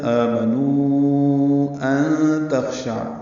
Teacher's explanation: نون ساکن کے بعد تا آنے کی وجہ سے اخفا ہے